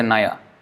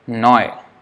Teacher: The last A is not pronounced, just like in Hindi. So the A becomes O. So instead of Nai, Noy.